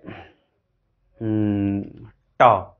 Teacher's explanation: ट, तालू है, तालू से रोके थे, ट हो गया